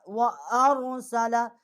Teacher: حمزہ جو ہے اس کو ہم اپنے مخرج سے نکالیں گے، اور را جو ہے اس کو موٹا کر کے پڑھیں گے، سین جو ہے اس کو نرم پڑھیں گے ، لام جو ہے اس کو بھی نرم پڑھیں گے، آگے